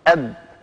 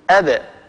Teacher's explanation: فهذه الأحرف كانت العرب إذا نطقتها وهي ساكنة تخرجها بالتباعد بين طرفي عضو النطق، فهذه الخمسة خالفت القاعدة الأصلية عند سكونها، لا تخرج بالتصادم بين طرفي عضو النطق ولكنها تخرج بالتباعد. يعني لا تقول العرب أب يعني هكذا بالتصادم، وإنما يقولون أب يعني يخرجونها بالتباعد بين طرفي عضو نطق، بين الشفتين.